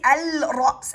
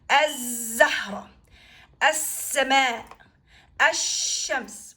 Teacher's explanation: the sound of lam swallowed into the consonant that follows it, and you're gonna pronounce that sound of the consonant with a shadda, because these two letters are very close on where they come from, the position or the location or the articulation points of the sound of these two letters are similar.